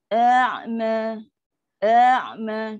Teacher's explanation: Ain tu kan ada sifat tawasud. Nak kata terlampau tertahan sangat syiddah pun tak, nak kata terlepas tenganga sangat pun tak. So dia tengah-tengah.